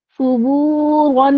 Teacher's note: और रॉ को हमने मोटा पढ़ना है